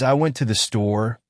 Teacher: native speakers tend to stress went in store